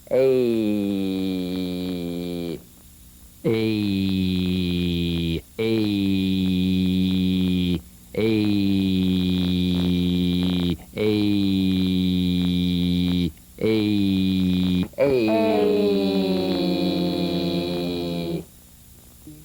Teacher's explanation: This is a variation of the Y buzz. It's a diphthong, that is, 2 sounds blended into one. It's E plus E, A.